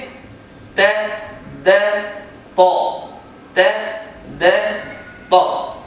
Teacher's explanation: پہلے حرف ادا ہونے والا باریک، اس کے بعد تھوڑا موٹا، اس کے بعد بہت موٹا اور اونچا